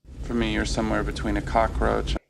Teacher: four is reduced to fur because it's unstressed